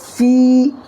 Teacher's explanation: یا مدہ کو ایک الف برابر کھینچ کر کے پڑھیں گے, اور ایک الف کی مقدار یعنی 1 سیکنڈ کھینچنا ہے